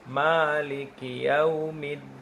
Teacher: Ayunan hanya di ma karena ma mad tabi'i.